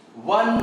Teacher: One begins with vowel, but while speaking, it is taking the help of both the lips.